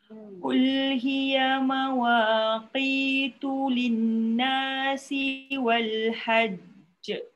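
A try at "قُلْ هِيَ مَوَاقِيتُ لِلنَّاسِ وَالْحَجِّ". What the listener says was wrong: Tu dia.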